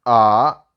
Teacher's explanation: first you have to lower your pitch from high then again you have to put on high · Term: third tone